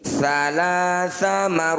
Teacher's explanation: Cara bacanya, ro ini panjangkan 6 harokat. Huruf yang terakhir kita sukunkan, matikan. Salasa marratin. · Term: mad arif lis sukun